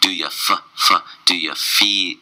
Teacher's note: Do you feel you are a, all goes together, and strong on the D, d, d, do ya, do ya, do you becomes do ya, right into the feel, the F sound, so the top teeth touch the bottom lip, but you do not close your mouth. Do ya, f, f, do ya, feel, e, e, do you feel, e, and then you have the L sound.